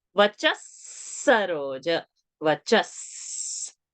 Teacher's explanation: a sa is coming, we read that visarga as sa